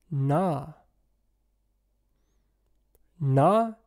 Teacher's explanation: na is a retroflex nasal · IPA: ɳ, [ɳ]